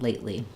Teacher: we use an unreleased T, first syllable stress, and then we go directly to that L sound